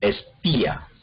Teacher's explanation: el acento cae en la I, y entonces la I forma una sílaba y la A forma otra sílaba diferente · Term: hiato